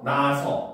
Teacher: 나다 같은 경우도 아서가 붙어서 원래는 나아서가 돼야 되는데 아가 연달아 발음되니까 하나가 탈락해서 나서 이렇게 되는 겁니다